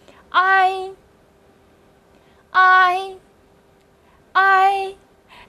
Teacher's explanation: 注意它的发音是先发啊，然后慢慢滑向一，啊读得重，一读得轻